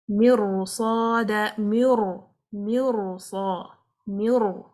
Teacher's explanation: So as a normal routine, we will say the Ra would be light because it has a kasra before it. But if a Ra Sakina has a kasra before it but followed by Huruf al-Isti'ala, any of the heavy letter, now this will impact the Ra Sakina and the Ra Sakina will be read with heaviness, with Tafkheem.